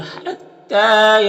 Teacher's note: حتیٰ تا میں کھڑا زبر ہے، 1 الف کے برابر کھینچیں گے۔ یا میں کوئی حرکت نہیں، اس کو نہیں پڑھنا ہے۔